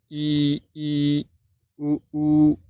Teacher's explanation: मुख जो है लगभग बंद रहता है। थोड़ा बहुत ही कम खुला रहता है। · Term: संवृत